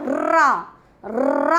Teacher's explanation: ऐसे वर्ण जिनका उच्चारण करते समय वायु मुंह के अंतर्गत घूमती हुई रुड़कती हुई प्रतीत होती है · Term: लुंठित या प्रकंपित